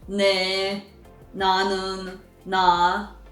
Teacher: But it is not actually D either. So it is not N, it is not D. So what is it? Well, it is somewhere between N and D.